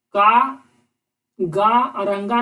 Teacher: का, गा और अंगा में कम हवा फेंक रहा है तो होगा अल्प प्राण